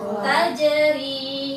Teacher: Tajri panjang pendek panjang